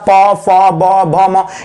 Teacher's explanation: देखिए भाई प वर्ग के बारे में मैंने कल ही आप लोग को बताया था प भ म ये सब के सब आपका कहां से आ रहा है ओष्ठ लगा है